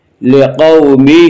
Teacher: کھڑی زیر قائم مقام ہے یا مدہ کی، اس لیے کھڑی زیر کو ایک الف کے برابر کھینچ کر پڑھیں گے